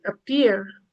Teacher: If the syllable is stressed, then P is aspirated. But if the syllable is unstressed, P is not aspirated.